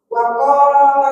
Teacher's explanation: Waqo kopnya kepanjangan nggih. Cukup 2 harokat saja. Waqala langsung gitu.